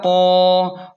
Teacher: قاف کو موٹا پڑھیں اور ایک الف کے برابر کھینچیں کیونکہ الف مدہ ہے